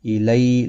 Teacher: الی، لی یالین ہے، یا ساکن سے پہلے زبر ہے، اس لیے ادھے الف کی مقدار کے برابر کھینچ کر پڑھیں گے